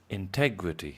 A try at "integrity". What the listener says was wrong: Integrity. The stress is on the e. Integrity.